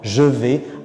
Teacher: Si la consonne est plutôt sonore, comme v par exemple, alors le je reste je et on va dire par exemple je vais.